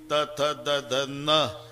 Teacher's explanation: त थ द ध न, दाताशिवाय उच्चार नाही.